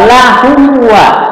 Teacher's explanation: Izhar syafawi. Izhar itu jelas, syafawi itu di bibir. Jadi jelas di bibir. Nah, ini alatnya hanya dengan bibir ini.